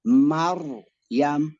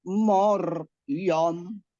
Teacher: Contoh, Maryam. Akibatnya huruf mim dibaca agak tafkhim atau vokal O. Iya, harusnya kan Maryam menjadi Moryam.